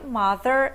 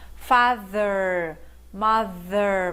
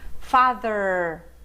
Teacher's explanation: você tem que colocar a língua entre os dentes e assoprar, mas esse TH aqui é voiced. As cordas vocais vibram se você estiver pronunciando da forma certa.